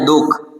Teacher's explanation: વિસર્ગની જગ્યાએ આપણે અડધા હ જેવો ઉચ્ચાર કરીએ છીએ તો હ બોલાય છે.